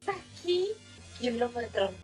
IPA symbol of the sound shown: kʲi